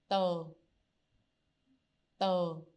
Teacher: So it sounds a little bit like the D, but basically it's between the T and the D in English. But the main tip is actually you put the t, like the tongue out, and try to not make any wind when you produce this sound. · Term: The T in Vietnamese, inexplosive sound